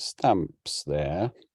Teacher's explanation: You can see it's a full rise at the end. It's a question on a full rise.